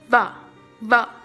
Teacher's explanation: It is labiodental. This sound is pronounced with the upper teeth placed on the lower lip.